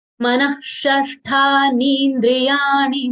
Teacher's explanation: Mana, both full letters followed by visarga. Visarga sound comes out as half retroflex sh as we exhale forcefully to pronounce visarga and prepare our mouth to say retroflex sh of shashthanindriyani.